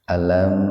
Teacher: Jadi mimnya dibaca jelas di bibir. Tahan 2 ketukan biar terdengar jelas. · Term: idhar syafawi